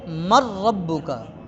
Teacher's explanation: تو اب ہم نے نون کو را کو ملا کر ایک کر دیا، نون اور را کو ملا کر ان کا آپس میں اب یہ جو ادغام ہوگا اس میں را کی آواز باقی رہے گی، نون کی آواز ختم ہو جائے گی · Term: بلا غنہ